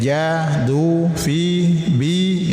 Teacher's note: Maka panjangkan harus konsisten mulai dari ja du fi bi. Ini konsisten satu alif dua harakat. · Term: mad asli